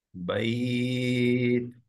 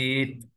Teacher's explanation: একটু তায়ের বাতাসটা বেরোবে, হ্যাঁ, ধরে শার্প স্টপ হয়ে তারপর বাতাস বেরোবে। বাইত। بيت.